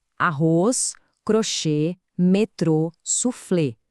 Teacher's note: A força está no final, é oxítono. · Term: oxítona